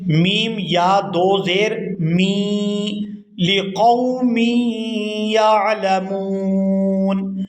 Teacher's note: میم کو یا مشدد کے ساتھ ملائیں گے تو غنہ کریں گے۔